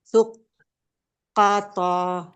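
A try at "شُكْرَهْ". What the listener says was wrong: Syuk. Syukoh. Kita sukunkan saja tak marbutonya.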